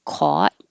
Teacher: more East Coast will have a rounded lips with an aw, caught. But for more general American English that most people are using, it's just ah, caught.